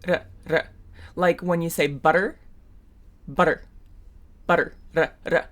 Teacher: produced at the alveolar ridge where you say D, d. It's just quicker.